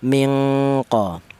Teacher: Untuk huruf nun ini, itu keluarnya huruf berasal dari ujung lidah menyentuh langit-langit mulut, sementara berjumpa dengan huruf qaf, di mana huruf qaf ini makhorijul hurufnya bertempat di pangkal lidah. Dari langit-langit mulut bertemu dengan huruf qaf ini sangat jauh. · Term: ifa abad